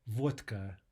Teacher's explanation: And vodka, D, devoicing to T